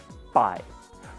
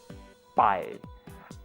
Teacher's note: The first sound in this word is not a P and it's not a B. It's somewhere in between, like this, pai.